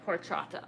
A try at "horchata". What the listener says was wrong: Or horchata. It's a silent H, I believe.